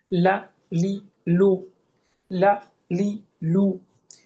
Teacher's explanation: জিহ্বার আগার কিনারা উপরের দাঁতের গোড়ার সঙ্গে লাগিয়ে, অথবা উপরের দাঁতের এক পাশের গোড়ার সঙ্গে লাগিয়ে। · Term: লাম